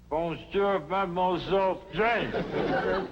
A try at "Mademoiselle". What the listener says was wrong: That's very good. Except for the mwah. It must be soft. Mwah.